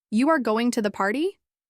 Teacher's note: I understood what he meant, but it didn't sound like a question. His voice was flat, as if he were making a statement.